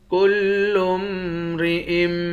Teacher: حمزے کو میم مشدد کے ساتھ ملا کر میم پر غنہ کریں گے